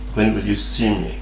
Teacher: an intonation pattern in which the last stress syllable goes down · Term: falling intonation